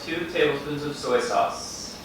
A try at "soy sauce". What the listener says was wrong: You just like hung on it for no reason.